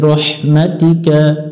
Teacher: লম্বা হা হলকের মধ্য থেকে অর্থাৎ গলার মাঝখান থেকে আমরা একটু বাতাস বের করে উচ্চারণ করব